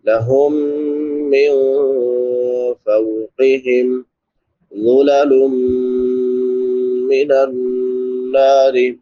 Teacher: نون ساکن پہ اخفا ہوگا کیونکہ بعد میں حروف اخفا میں سے فا ہے